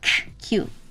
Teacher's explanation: it has a little more air coming out cuz it's a k. So, it's Q.